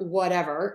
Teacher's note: So the key is to, again, make the would very short, whatever, and we're going to use that flap T there, so it's going to sound like a D